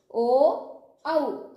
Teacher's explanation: കണ്ഠം ഓഷ്ടം ഇവ രണ്ടും ഉണ്ടെങ്കിൽ മാത്രമേ നമുക്ക് ഓ ഔ എന്ന് ഉച്ചരിക്കുവാൻ സാധിക്കുകയുള്ളൂ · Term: കണ്ഠോഷ്ടം